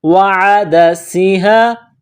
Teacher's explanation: سین میں سیٹی کی آواز پیدا کرنا ہے